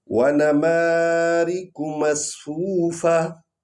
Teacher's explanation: ہا پڑھنا ہے، کیونکہ جب وقف کرتے ہیں تو یہ تا جو ہے وہ حالت وقف میں ہا بن جاتی ہے، یعنی ہم نے ہا کی آواز نکالنی ہے اور اس کو ظاہر بھی کرنا ہے۔